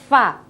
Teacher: Kalau fa dia berada di perut bibir bawah, sementara gigi serinya menyentuh perut bibir bawah. Jadi fa, bukan bibirnya yang ketemu bibir.